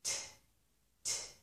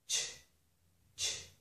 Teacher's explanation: Normally we do not round the lips for t, t, but up here we do because it's combined with the sh. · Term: ch sound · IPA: tʃ